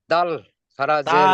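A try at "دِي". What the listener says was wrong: দাল, দালের যে তিন আলিফ টান সেটা টান দিয়ে বলেন দাল খালাজের দি।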